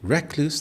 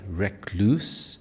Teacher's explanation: The stress is on the first syllable. Recluse. In Indian English, depending on region, it may be more like recluse, stressing the second syllable more.